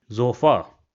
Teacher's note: So you see again we have an emphasis on the a at the end.